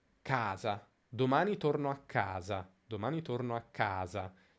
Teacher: la A di ca si allunga in maniera evidente. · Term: accento di frase